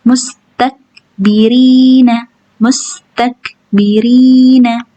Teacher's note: Karena huruf kaf enggak boleh mantul, bukan huruf qalqalah. Jadi, cara bacanya hanya keluar anginnya aja. mustakbirina mustakbirina mustak tak takbirina yang keluar hanya angin bukan pantulan ti kita ulang lagi.